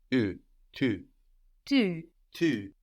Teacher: So this U sound is like in plus tard. And we point our lips out for this.